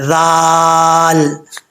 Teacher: تا کے بعد ذال ہے، زبان اس کا مخرج، ذال کا مخرج ہے، زبان کی نوک اوپر والے دانتوں کے نچلے حصے سے لگے تو ذال پڑھا جاتا ہے، ذال، بغیر سیٹی کے، سیٹی کے ساتھ نہیں پڑھنا، ٹھیک ہے۔